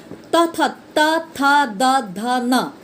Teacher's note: त बोलते समय मेरा जीभ जाकर कहाँ लगा? दांत में लगा, इसीलिए है इस दांत को छुआ।